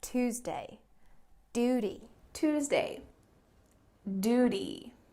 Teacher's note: Tuesday, tuna, duty, news. In American English, they often drop this y sound. It's called yod dropping.